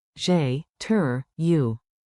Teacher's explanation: Keep it light, smile, and make the polite rise at the end.